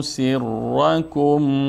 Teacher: سین مرقق خوانده میشه و اینجا ری چون مفتوح است مفخم نطق میشه